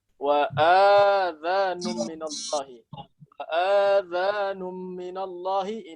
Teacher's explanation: ada orang yang membaca dengan memanjangkan hamzah seperti mad badal